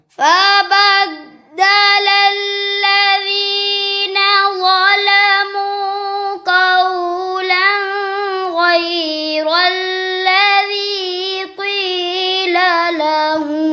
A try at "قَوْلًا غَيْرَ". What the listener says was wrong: ये कौलन पे गुन्ना क्यों कर दिया गैन रुफेल किया आगे कौलन गैर الذي